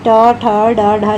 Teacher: यानी ट ठ ड ढ ये किस में आ जाएंगे, मूर्धा में आ जाएंगे।